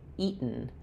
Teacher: we're doing an unreleased or stopped t sound where my tongue goes up to make the t eat. And then I go right to what's called a salabic n eaten.